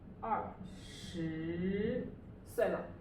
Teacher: 2 is fourth tone falling tone